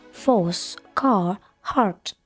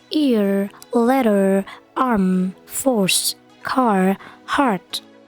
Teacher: ketika British mereka r-nya tidak dibaca atau disamarkan